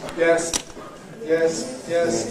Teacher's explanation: doesn't go up, doesn't go down, stays on the same pitch. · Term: mid-level tone